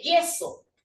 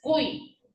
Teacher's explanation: Pero aquí no, pues, porque la Y no finaliza, sino que inicia. Y cuando inicia la sílaba ya no suena vocal, sino que suena como si fuese una consonante. Suena como si fuese una doble L. Ahí no puedo sacar diptongo.